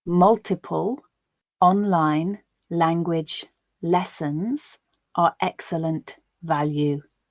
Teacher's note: a word final l sound which would be dark if followed by silence or by a consonant sound becomes clear because it's followed by a vowel sound